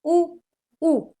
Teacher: इ आगे और ये पीछे वाला उच्च वाला भाग होगा। उच्च भी है, पीछे भी है और गोल भी है।